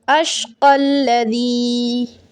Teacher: لا یصلاھا، again مشدد، سختی دیں ادھر، الا الاشقى، اشقى الذی، یا مدہ ہے، یا ساکن سے پہلے زیر، یا مدہ کہلاتی ہے، 3 سیکنڈ کھینچا جائے گا